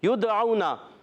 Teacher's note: یدعونا یا کو دال سے ملانا ہے، یا ادا ہوتا ہے وسط زمان وسط تعلق سے، اور دال ساکن ہے قلقلہ ہوگا، آواز لوٹ کر آئے گی